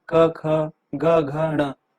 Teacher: अब जो क वर्ग वाले जो हैं, क, ख, ग, घ, ण, ये इन सब की जो क वर्ग वाले जो हैं, इन सब की जो आवाज है वो निकलती है कंठ के स्पर्श से